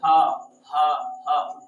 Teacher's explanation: ह डायरेक्ट कंठ से निकलता है